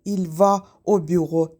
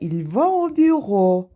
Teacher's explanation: birinci sözün son saiti ikinci sözün birinci saiti ilə birləşərək bir hec əmələ gətirir. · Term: anşuma vokalik